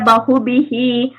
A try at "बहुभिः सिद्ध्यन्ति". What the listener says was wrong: பகுபிகின்னு சொல்லக்கூடாது கூடாது பகுபிஸ்ஸங்க இஸ்ஸங்க அந்த விசர்க்கத்தை எடுத்துட்டு இஸ் உச்சரிக்கணும் திரும்ப அந்த லாஸ்ட் லைன் மட்டும் சொல்லுங்க